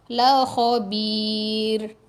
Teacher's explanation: Sebab kita tengok huruf yang berbaris. Sebelum ra ni huruf berbaris dia adalah ba bawah bi. Huruf bawah. Jadi ra ni nipis. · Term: Ra nipis